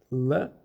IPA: l